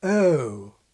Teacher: One is the vowel of GOAT, which in the familiar symbol begins with schwa, as it does in SSB, ə, əʊ. But the King begins the vowel further forward in the mouth, ɘʊ. And his MOUTH vowel is quite different from today's aw, starting a bit further back in the mouth and with no lip rounding at all.